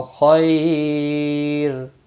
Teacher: جب ساکن ہوگا تو باریک بھی پڑھا جائے گا، یاد رکھیں را ساکن سے پہلے جب بھی یا ساکن ہوتی ہے تو را ساکن باریک ہی پڑھا جاتا ہے